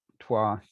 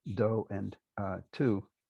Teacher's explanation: the W's have been lost independently in Hindi and in modern English. So you end up with pairs that look reasonably cognate still, do and tu.